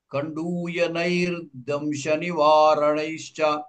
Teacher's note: విసర్గ దకారం పరంగా ఉంది విసర్గ రేభగా మారింది